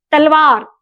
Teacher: तलवार बोलते समय जिह्वा दांत को स्पर्श करती है